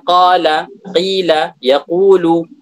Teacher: Yumaddu min miqdari harakatain, dipanjangkan dengan ukuran harakatain, 2 harakat. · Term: mad tabi'i